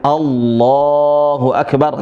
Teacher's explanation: Kalimat Allah saja. Itu boleh dibaca tebal lamnya.